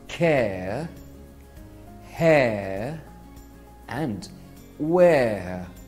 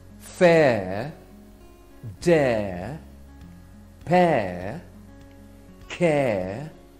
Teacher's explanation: the word this is because they combine two vowel sounds so when you say the air sound your mouth will start on the position of the egg sound and finish on the position of the earth sound